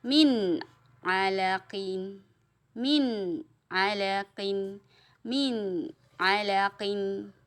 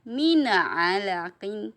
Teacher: man a tidak boleh dipantulkan, jangan mana a, tapi man a, harus jelas ya